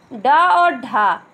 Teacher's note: इसका प्रयोग शब्द के आरंभ में नहीं होता है, कभी भी इसका प्रयोग शब्द के आरंभ में नहीं होता है। इसके उच्चारण में जीभ को ऊपर उठाकर आगे की ओर फेंका जाता है, इसीलिए इन्हें उत्क्षिप्त व्यंजन भी कहते हैं।